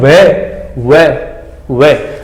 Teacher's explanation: व दांत और होठ गोल हो रहे हैं, तो ये दंतोष्ट है